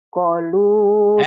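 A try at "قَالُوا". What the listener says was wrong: Kan panjang, Bu, ininya.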